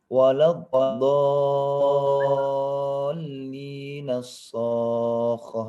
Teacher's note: Jadi wala di sini dia itu pendek karena di sini ada dha syiddah.